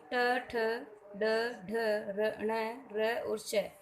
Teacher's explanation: ये सभी वर्ण मूर्धा से बोले जाते हैं, अतः इन्हें मूर्धन्य वर्ण कहते हैं।